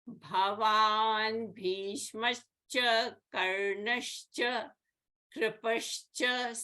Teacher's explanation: So Visarga followed by cha, and this Visarga becomes a sh. Similarly in Karnascha, Karnaha and cha. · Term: Visarga Sandhi